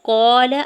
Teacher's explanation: قال، الف پہلے قاف کے اوپر زبر، الف مدہ ہو رہا ہے، لام کے زبر کو بغیر کھینچے ہوئے ادا کرنا ہے.